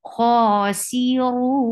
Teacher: you should be able to hear noon very clearly. You cannot stop abruptly, otherwise this noon will be dropped. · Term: tawassut